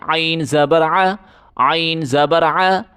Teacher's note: گلے سے زور لگا کے عین پڑھیں